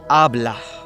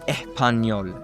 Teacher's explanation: most natives do this, is that they replace S's in Spanish with H sounds.